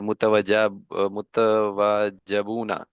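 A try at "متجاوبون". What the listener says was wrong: मुता मुत, आपने वाव पहले कर दिया जीम से।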